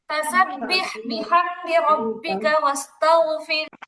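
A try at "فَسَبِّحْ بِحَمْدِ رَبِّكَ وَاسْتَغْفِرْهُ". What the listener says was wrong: ধীরে ধীরে পড়তে হবে, রিল্যাক্সে পড়তে হবে। খুব দ্রুত পড়ে, নার্ভাসনেস নিয়ে পড়ে, একদম রিল্যাক্সে পড়তে হবে।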